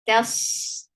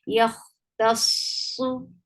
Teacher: ta will be light, sa will be heavy. Yakh, tasu, and you are stopping at the letter which is mushaddad, like which is with a shadda.